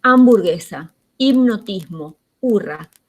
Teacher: no pronunciamos la h la hamburguesa hipnotismo hurra la h está muda